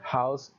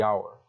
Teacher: Pero las dos palabras no se pronuncia la H de la misma manera. En la primera palabra, house, es parecido a una J del español. La H tiene un sonido. En la segunda palabra, hour, la H es completamente muda.